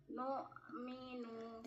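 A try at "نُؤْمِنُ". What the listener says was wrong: tidak dilepas. Minu, macet. 3, bukan ada dilepas. nu'minu. Nah, sama seperti tadi. Nah, jangan dilepas sebelum mengucapkan berikutnya.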